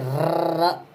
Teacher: दूसरा प्रकंपित, यानी जिसको हम लेते हैं र, तो इस तरीके से इसमें ये कांपती है हमारी जीभ, तो इसलिए इसको प्रकंपित बोलते हैं।